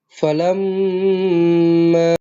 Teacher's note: Mim yang bertanda sabdu eh wajibul ghunnah.